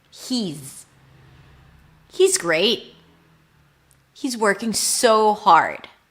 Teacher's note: the word is ends with a Z sound, even though it's spelled with an S.